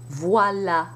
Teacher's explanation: it's pronounced as though it had no accent, just A, the front A